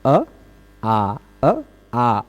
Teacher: अ बोलने में कम मुंह खुलता है, आ बोलने में थोड़ा सा ज्यादा खुल जाता है ना। यद्यपि इन दोनों का उच्चारण स्थान एक है, कंठ, कंठ से ही सीधे इसका भी उच्चारण होता अ आ।